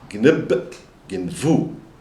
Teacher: the B which is a stop has become a fricative the v sound